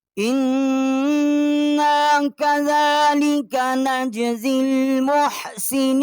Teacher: ہم نے حمزہ کو نون کے ساتھ مشدد کیا ہے اور یہاں غنہ کیا ہے